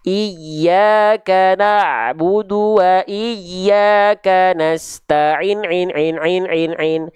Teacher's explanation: berarti seperti kadar melafalkan ain sebanyak 6 kali pelafalan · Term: 6 harokat